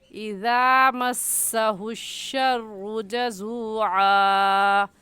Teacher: ذال کی جگہ زا پڑھنا درست نہیں ہے، اور نرمی سے پڑھنے کا طریقہ یہ ہے کہ اپنی زبان کی نوک دونوں دانتوں کے درمیان، دونوں دانت اوپر کے اور نیچے کے جو دونوں دانت ہیں ان دونوں دانتوں کے درمیان زبان کی نوک جب آپ لے کر آئیں گی تو ذال نکلے گا اور ذال خود بخود نرم ہو جائے گا۔